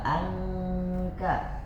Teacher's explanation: ketika kita membaca nun yang sukun, seakan-akan kita mau melafalkan huruf ka. Sudah pada pintu huruf ka. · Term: Ikfa